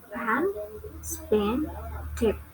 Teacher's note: The first is English consonant P. It belongs to bilabial and stop.